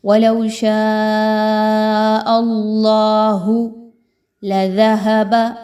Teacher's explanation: اللہ کو پر پڑھیں گے، باریک نہیں پڑھنا